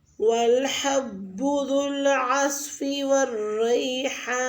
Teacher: والحب میں حا کا مخرج وسط حلق سے ادا کریں، ذو العصف میں عین کو بھی وسط حلق سے ادا کریں، جیسا کہ ہم ہا بولتے ہیں۔